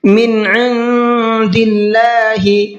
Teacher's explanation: من عند اللہ، من کی نون کو ظاہر کر کے پڑھنا ہے، اس لیے کہ نون ساکن کے بعد میں عین آ رہا ہے اور عین اظہار کے حرفوں میں سے ہے۔ جب نون ساکن کے بعد میں عین آتا ہے تو وہاں نون کی آواز کو صاف صاف پڑھتے ہیں